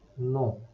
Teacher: The final N is not pronounced and ON has a nasal sound.